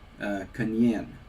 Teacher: They'll be kanyen with a palatal nasal and a ya.